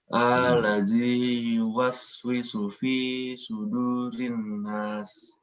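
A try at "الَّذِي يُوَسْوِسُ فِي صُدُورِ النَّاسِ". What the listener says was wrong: Di sini masuknya allazi itu jangan diperpanjang ya. Allazi bukan, tapi allazi. Dan yang terakhirnya jangan lupa dipanjangkan juga. Sudurin nas. Rinnas panjang ya. Rinnas.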